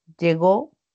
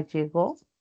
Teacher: Entonces hay una función distintiva porque en este primer caso la oración enunciativa está afirmando y es descendente. Mientras que en el segundo hay una pregunta directa por la presencia de los signos, entonces es ascendente.